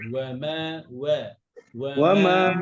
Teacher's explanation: আমাদের পড়ার সময় ওয়াওটা মোটা হয়ে যায়, ওয়া মা হয়ে যায়